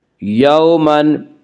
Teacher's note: واولین کو نرم آواز کے ساتھ جلدی پڑھیں گے